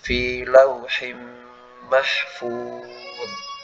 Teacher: Jadi huruf dha itu bukan huruf qalqalah. Jangan sampai kita membacanya dengan memantul. Jadi dialirkan suaranya, bukan dipantulkan.